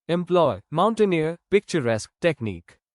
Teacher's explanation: stress on last syllable